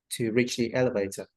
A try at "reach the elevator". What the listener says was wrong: a bit too short.